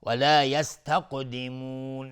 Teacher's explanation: مد عارض للسکون به مقدار 2 یا 4 یا 6 حرکت میتونیم مد بدیم